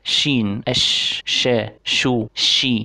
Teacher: اما الصفه الثانيه معنا اليوم وهي صفه التفشي يا جماعه، والتفشي هو معناه انتشار الرياح في الفم حال النطق بالحرف، وهي صفه لحرف واحد في اللغه العربيه، الا وهو حرف الشين، شين اش شا شو شي. فهذا هو صوت انتشار الريح في الفم عند النطق بحرف الشين